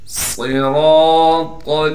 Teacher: صراط صاد کو موٹا کر کے پڑھنا ہے، صاد میں سٹی بھی ادا کرنی ہے، را کو بھی موٹا کر کے پڑھیں گے، را کے بعد الف ہونے کی وجہ سے را کو ایک الف کی مقدار کھینچیں گے، طا بھی پر پڑھی جائے گی، طا کو آگے لام سے ملا دیں گے۔